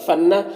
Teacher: نون میں یہاں پر اخفا ہوگا، نون کے آواز کو ناک میں چھپا کر پڑھیں گے